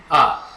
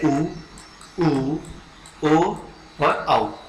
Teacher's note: इसी प्रकार से उ, ओ और औ, ये जितने भी वर्ण हैं यहाँ पर, ये इन स्वरों का जो उच्चारण है जीभ के पिछले हिस्से से हो रहा है। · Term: पश्च स्वर